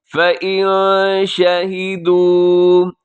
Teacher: فَإِن شَهِدُوا، نون ساکن کے بعد شین، تو یہاں ہوگا اخفا۔